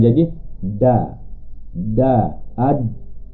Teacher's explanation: ramai orang Melayu akan menyebut dal dengan menggunakan hujung lidah ditemukan dengan lelangit atas, bahagian atas lelangit, maka bunyi akan jadi ada. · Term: bunyi dal bagi orang Melayu